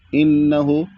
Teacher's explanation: यहां पर गुना होगा क्योंकि नून मुशद्ददा है और नून मुशद्ददा यानी तशदी जब होता है तो गुना होता है।